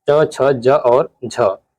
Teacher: च छ ज और झ ये तालव्य ध्वनियां है